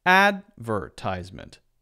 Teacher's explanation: in American English if you say that advertisement the first syllable is stressed